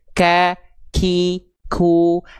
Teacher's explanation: Jadi ketika kita melafalkan huruf kaf, dia ada percikan nafasnya. Ka, k. Tapi bukan nafas yang lebai berlebihan. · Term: hams